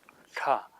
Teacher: The Sanskrit alphabet has another series of letters that are very similar in sound to those dental tas. They're called retroflex letters, and they're made by bending the tongue back to the top of the mouth, so the ta becomes ta.